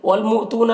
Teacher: گے، واو میں کوئی حرکت نہیں اسے نہیں پڑھنا ہے، والمؤتون یہاں پر حمزہ ساکنہ ہے جھٹکا لگے گا ، تو میں واو مدہ ہے ایک الف کے برابر کھینچیں